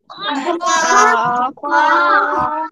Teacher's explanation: এই খ অক্ষর কোন জায়গা থেকে উচ্চারণ হবে হলক বা গলার শেষ ভাগ থেকে